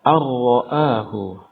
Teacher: di sana ada nun sukun ketemu dengan huruf ra, maka hukum bacaannya adalah idgham bila gunnah.